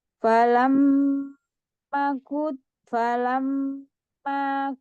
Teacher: mim tasdidnya digunahkan dulu kemudian panjang